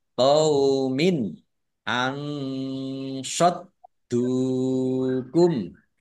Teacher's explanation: Nun sukun bertemu dengan huruf shot bacaan ikhfa dibaca samar-samar